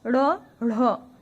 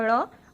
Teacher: सघोष मतलब इनके उच्चारण में कंपन सी महसूस हो रही है स्वर तंत्रियों में · ढ़, इसमें ह शब्द का उच्चारण हो रहा है, तो ये महाप्राण है, और ये वाला ड़ अल्प प्राण है, और ये दोनों ही सघोष हैं।